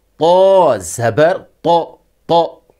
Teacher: Ta سے گہرا تلفظ کیا گیا ہے۔ ہونٹ گول نہیں ہوں گے۔